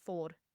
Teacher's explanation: speak English with an Indian accent here because the number four we obviously don't use the r but I have to say it for Indians